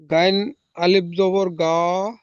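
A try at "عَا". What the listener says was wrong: গয়েন নয় ওটা, আইন আইন। আইন আলিফ জাবার আ। গয়েন নয়, আইন। গয়েনের উপরে নক্তা হয়, গয়েনের উপরে নক্তা হয়, এখানে নক্তা নেই, এটা হলো আইন। আইন আলিফ জাবার আ।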